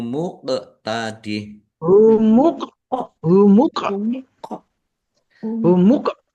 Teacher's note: Q sukun bacaan qalqalah dibaca memantul ditampakkan pantulannya